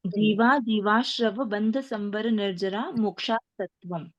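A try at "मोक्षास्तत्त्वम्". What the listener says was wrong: बहुत अच्छे।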